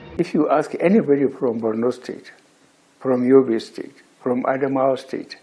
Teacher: you're going to realize he said prom instead of from. So he replaced the F there with a letter P, prom.